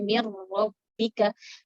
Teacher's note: Nun kita rubah hurufnya ke ro. Kemudian kita gabungkan ke huruf setelahnya. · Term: idgham